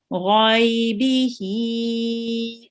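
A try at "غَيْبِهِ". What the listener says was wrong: Now the ha again a bit longer, tiny little bit longer.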